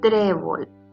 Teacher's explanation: trébol es una palabra grave porque su sílaba tónica es la penúltima